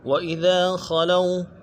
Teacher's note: خلو میں خا کو موٹا کرنا ہے، اور لو جو ہے اس کو یہ لین ہے، نہیں کھینچیں گے، واو لین ہے